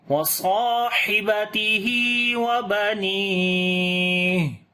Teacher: اور جب رکیں گے تو ہا کے اوپر صفت ہمس آ جائے گی